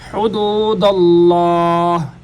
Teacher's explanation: لفظ اللہ کلام کا قاعدہ آپ حضرات نے پہلے بھی سنا ہوگا کہ لفظ اللہ کلام سے پہلے اگر زبر یہاں پیش آئے تو لفظ اللہ کلام موٹا ہوتا ہے، اور آ کا بھی یہی قاعدہ ہے، اور اگر زیر آئے تو پھر یہ دونوں باریک ہوتے ہیں۔ یہاں پر زبر ہے تو لفظ اللہ کلام موٹا ہوگا